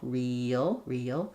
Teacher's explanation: we do almost have two syllables, real, because we have vowel to vowel linking between that front E and that sound before that L, real. But really is more difficult and kind of sounds too stretched out for most cases because it's not usually the stressed word.